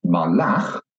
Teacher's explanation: then you can hear that the stress is at the end of the word.